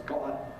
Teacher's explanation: got to be now in London [ˈgɒtə] becomes [ˈgɒʔə].